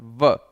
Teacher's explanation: जब आप व बोलते हैं, व जब बोलते हैं तो ऊपर का जो दांत है वो नीचे के होंठ के पास आता है। ध्यान रखिएगा, होंठ दांत के पास नहीं जाता है, दांत तो होंठ के पास आता है व। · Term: दंतोष्ठ